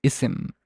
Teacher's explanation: if you actually hear it it's isim there is a glottal stop